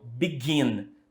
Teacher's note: Begin tem a sílaba tônica no final, gin